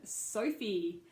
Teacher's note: Sophie even though it's a short name is complex in its structure because we have the diphthong oh